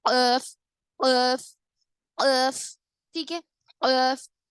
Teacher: زبان کی جڑ جو آخری حصہ ہے زبان کا، وہ اوپر کے تالو کو لگنے سے جو چھوٹی زبان ہماری ہوتی ہے اس سے ٹکراتی ہے